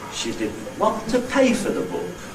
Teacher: “pay” is the Nucleus. That's the last accented syllable. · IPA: She ∘didn't ˈwant to ˋpay for the ∘book.